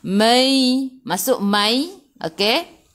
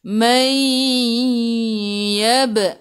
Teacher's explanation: Jadi idgham ma'al gunnah masuk bersama dengung. Dengung 2 harakat. Masuk dulu ke dalam ya, lepas tu dengung 2 harakat.